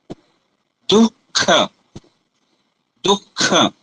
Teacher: जो जीवा का मूल है वहां पर स्पर्श हो रहा है क और ख के पहले विसर्ग को उच्चारण करने पर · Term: जीवा मूली